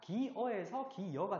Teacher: 기여가 되는 과정에서는 반모음 J가 첨가됐죠. 없던 게 생겼으니까.